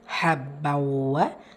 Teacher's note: தன்வீனை தொடர்ந்து letter வாவ் இதுகாம் பில் குன்னா இணைச்சி குன்னா செஞ்சு ஓதணும்